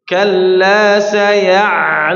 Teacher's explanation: Ya, ditekan sampai dia mengalir sedikit, ya. Ditekan sampai mengalir sedikit huruf ain, bainiyah dia.